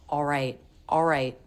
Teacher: I don't even really make much of an l sound I more just make an a vowel like in law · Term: dark l, dropping the L